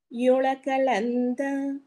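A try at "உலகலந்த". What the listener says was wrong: ఉల్ల యు కాదండి, గా అండి, కా కాదు, గా అనాలి అక్కడ. ఓంగి ఉలగలంద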